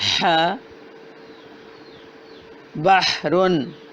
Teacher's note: ہا وسط حلق سے رگڑ کھا کر آواز نکل رہی ہے